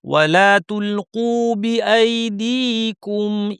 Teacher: ওয়ালা তুলকু ভারী কিন্তু তুল পাতলা